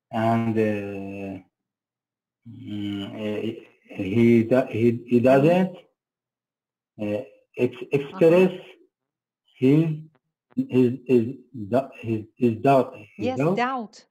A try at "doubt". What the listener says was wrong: Doubt, yes. Doubt. You don't pronounce the B. Don't say doubt, but no. Doubt. Doubt.